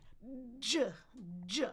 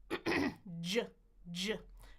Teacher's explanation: Well, if I put those in order, if I stop and then do friction, that's our J sound. J, I'm stopping the air, then I'm giving friction as I release.